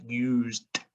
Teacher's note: And we should know this as a split oo sound, used, used. You've got that D make a t sound there